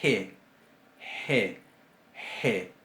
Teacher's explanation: Es sorda, es fricativa. Digo sorda porque no usa acción de las cuerdas vocales.